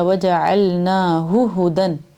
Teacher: ہو کو کھینچنا نہیں ہے، وجعلناہ ہدن اس طرح پڑھنا ہے، وجعلناہ، نا کو بھی کھینچنا ہے کیونکہ اس پہ کھڑی زبر ہے نون پہ، وجعلناہ ہدی لبنی اسرائیل۔